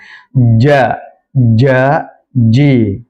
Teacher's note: huruf jim perlu diketahui bahwa makhrajnya adalah pertengahan lidah yang naik ke atas menempel secara sempurna